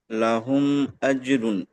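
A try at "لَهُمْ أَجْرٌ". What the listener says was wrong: মাশাআল্লাহ, খুব সুন্দর হয়েছে।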